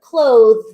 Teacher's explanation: Many times we don't really pronounce the TH in that word, clothes.